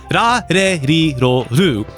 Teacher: I've always thought of it as the Japanese language doesn't have an R or an L sound, but really an R and an L sound smashed together